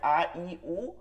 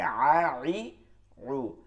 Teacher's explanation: একটা হচ্ছে হলকের শুরু থেকে নর্মাল আওয়াজে আ ই উ, আর হলকের মধ্যখান থেকে আ ই উ